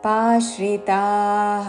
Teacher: పా దీర్ఘము దాని మీద ఆఘాత